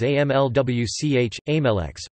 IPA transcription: ˈæmlʊx